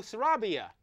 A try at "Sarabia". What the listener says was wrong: It's Sarabia. Sarabia. Roll the R. Roll the R.